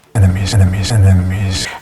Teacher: the second e is pronounced as an uh